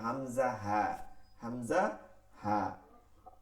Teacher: এক নম্বর মাখরাজ হলকের শুরু হইতে হামজা হা